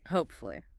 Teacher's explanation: 3 syllables. Stress on the first part. Hope. Hopefully.